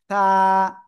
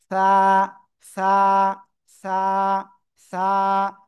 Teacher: জিব্বার আগা, উপরের 2 দাঁতের আগায় লাগান।